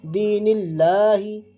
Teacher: दीनिल्लाही नहीं पढ़ेंगे, दीनिल्लाही पढ़ेंगे क्योंकि ये इसको पुर नहीं पढ़ेंगे, क्योंकि अल्लाह के लाम से पहले ज़ेर है, इसलिए इसको बारीक पढ़ेंगे